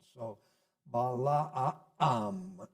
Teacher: The double A normally implies a glottal stop in the middle of the ah sound.